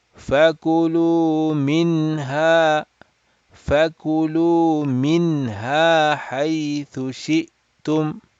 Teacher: So sukun sign on noon sakin signifies that it is a Izhar halaqi situation. We are not going to stretch the nasal sound, and we will make it with the noon sound. The noon sound, we will make it very clear.